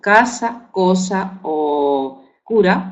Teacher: Uno oclusivo velar sordo ante la letra A, O U